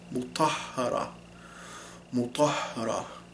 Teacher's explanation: If you're using the English H with this letter, you are going to have an American accent, for sure, an English accent. Because in Arabic, I feel like it's much lower in the throat, and there's a lot more aspiration to it. You have a stronger sound, ha, ha.